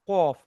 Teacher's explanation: জিহ্বার গোড়া ও ওই বরাবর উপরের তালু হতে কফ এবং কাফ উচ্চারিত হয়।